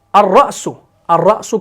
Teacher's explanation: تو یہاں پر را کو پڑھا گیا، لام کو نہیں پڑھا گیا، الف حمزہ کو براہ راست را سے ملایا گیا تو یہ آپ کا شمسی ہے.